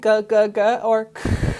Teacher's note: So I'm going from just pushing air up through an open vocal tract to now quickly closing and then opening that entire tract with this big mass, the back of my tongue